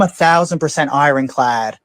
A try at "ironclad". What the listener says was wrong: Iron. You don't pronounce the R. Just ironclad.